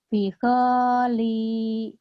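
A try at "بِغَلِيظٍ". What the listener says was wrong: Go-nya pendek ya. Bigholidhi gitu.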